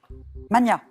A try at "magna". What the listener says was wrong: En français, on entend souvent mania, et en fait, on doit le prononcer comme pour Magnus. Donc c'est Magna, même si on l'entend moins, hein, mais voilà.